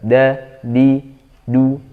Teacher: Kalau masih ada hembusan udara, hati-hati ketika melepaskan lidah dari gusi gigi seri atas. Jadi makhraj huruf dal itu adalah ujung lidah ketemu dengan gusi gigi seri atas bagian dalam